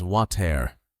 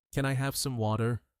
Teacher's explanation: That's correct in British English. But in American English, the T changes into a soft D sound.